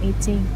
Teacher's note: you should put a stronger stress right on the word 18 on the second syllable